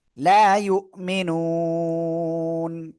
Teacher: এজন্য আমরা কি করব? এখানে নুনটা সাকিন হবে এবং তার আগে এক আলিফ মাদ, এজন্য আমরা 3 আলিফ টেনে পড়বো।